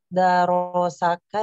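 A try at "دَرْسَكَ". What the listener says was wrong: Bukan iya. Darosaka, tapi Darsaka.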